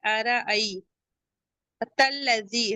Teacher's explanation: یا لین ہے، اسے نرمی سے تھوڑا سا کھینچ کے ادا کریں گے۔ · ارأی تلذی، تا کو لام سے بھی لائیں گے، لام مشدد ہے اور یا مدہ ہے، اسے 2 کاؤنٹ پڑھیں گے۔